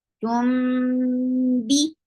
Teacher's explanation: This is ikhfa shafawi. Keep the sound in your nose very nicely.